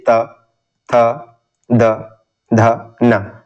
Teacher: हमारे जो दांत है वो थोड़ा सा स्पर्श होता है इसके उच्चारण करते समय। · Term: दंत व्यंजन